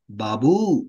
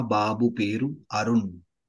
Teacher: when you are calling, you need to use the long vowel sound at the end.